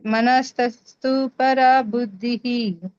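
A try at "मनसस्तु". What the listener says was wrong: ಮನಸ್ತಸ್ತ ಬರಲ್ಲ ಮನಸಸ್ತು ಡೈರೆಕ್ಟ್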